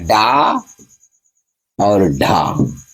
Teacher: इस वर्ण का उच्चारण करते समय हमारी जीभ एक झटके के साथ नीचे की तरफ आती है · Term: उत्प्रेक्ष व्यंजन